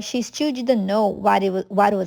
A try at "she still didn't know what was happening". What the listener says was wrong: But pronounce the didn't. She still didn't know what was happening. However, if it's negative, you should stress it.